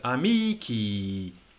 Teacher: It has a long vowel at the end that's not stressed. And this presents us English speakers with massive problems because our brains are programmed to associate a long vowel with stress.